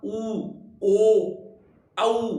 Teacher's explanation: उच्चारण करने पर होठों का आकार लगभग गोल सा हो जाता है यानी वृत्त के जैसा हो जाता है जैसे मैं बोलता हूं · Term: वृत्ताकार